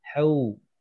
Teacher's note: wau sukun sebelumnya fathah ini yang keluar adalah bunyi u